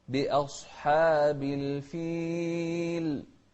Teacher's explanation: أصحابي غلط، بأصحاب. شوف الهمزة بأ والصاد مفخمة والحاء مرققة